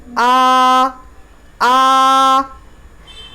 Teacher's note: खड़ा ज़बर की आवाज़ थोड़ा सा आवाज़ को खींचना पड़ेगा, लेकिन आवाज़ ऊपर की ही तरफ उठेगी। एक अलिफ बराबर आ।